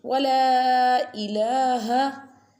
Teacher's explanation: Stretch it lam because madda is on the lam, so stretch it, little bit stretched. Wala ilaha, and this one ha pronounced from the bottom part of throat.